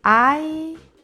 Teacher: Mira, ai és el diftong d'aire. És un diftong decreixent, perquè primer hi ha la vocal forta i després la vocal dèbil.